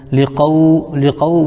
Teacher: واو ساکن سے پہلے قاف کے اوپر زبر ہے اس لیے واولین ہوگا, واولین کو نرم آواز کے ساتھ ادا کریں